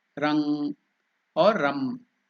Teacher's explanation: instead of completing the M with the lips you can just stop that sound in the nose nasal sound rang or Ram so either of the two can